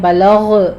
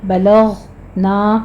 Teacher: غین کو آپ نے پر پڑھنا ہے اور اس پر قلقلہ نہیں کرنا